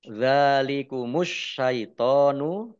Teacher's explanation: alif lam samsiah karena tidak dibaca langsung masuk ke huruf berikutnya yaitu shin, ditandai shinnya ada tasdidnya. Shinnya dibaca double.